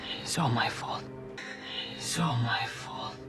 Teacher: So, it's, not its. We then link the S from its to all. So we hear link these first 3 words together completely, almost as if it were just one word.